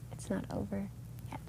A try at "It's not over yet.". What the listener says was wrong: Not over is not one word.